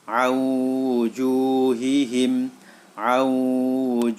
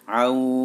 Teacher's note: Karena ada nun sukun bertemu dengan huruf idgham bi gunnah yaitu wawu. Maka suara nun masuk ke dalam huruf wawu.